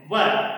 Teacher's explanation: साधारणतः बात यह है कि ऊपर वाले दांत नीचे वाले होठ को स्पर्श करते हैं। व ऊपर के दांत नीचे वाले होठ को स्पर्श करते हैं। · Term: दंतोष्ठम